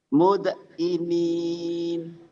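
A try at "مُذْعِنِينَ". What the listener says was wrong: Mud. Bukan mud ya, itu zal. Mul gitu, zal. Mul'inin. Mul'inin.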